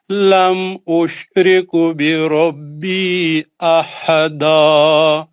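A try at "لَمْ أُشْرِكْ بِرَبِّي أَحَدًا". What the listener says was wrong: اشرکو نہیں ہے وہاں پہ، اشرکو نہیں ہے، دیکھ کے پڑھیے.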